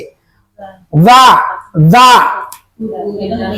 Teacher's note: ujung lidah dengan ujung gigi ujung gigi bukan ujung gusi